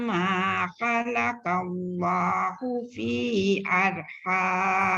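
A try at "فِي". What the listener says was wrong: Fi tadi tu dia kena panjang tu Datuk. Fi dia paling kurang 4. Fi tadi fi.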